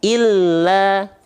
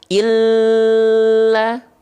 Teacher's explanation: Tapi kalau lam bertasydid, illa, bukan ditahan, ditekan.